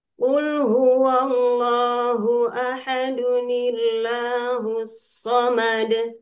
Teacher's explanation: Ahadun ini sebetulnya tidak ada nun wiqayah, tapi ketika dibaca terdengar seperti ahaduni